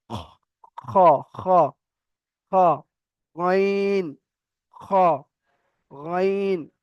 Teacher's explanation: একদম হালাক বা কণ্ঠনালীর শেষ হতে উচ্চারিত হয়, একদম মানে শেষ থেকে উচ্চারণ হবে, কণ্ঠনালীর শেষ।